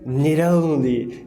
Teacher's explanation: O único fenômeno que a gente tem aqui é o need e o only, que juntam, aí vira need only. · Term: flapping